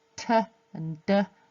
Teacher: So we've got They're all plosives in this case, and so p and b both using both lips, so those are bilabial plosives, and then t and d both tongue on the alveolar ridge just behind the teeth, so they are alveolar plosives